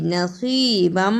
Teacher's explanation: نصیبم اسے نصیبم نہیں پڑھنا، صاد کی جگہ پہ سین کی آواز نہیں آنی چاہیے